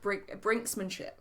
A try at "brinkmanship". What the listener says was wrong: Because you're wrong, but it's brinkmanship. There's no S in the middle.